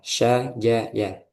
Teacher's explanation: pertengahan lidah ketemu langit-langit